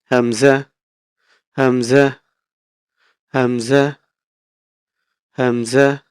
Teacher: হলকের শুরু হতে উচ্চারণ হবে হামজা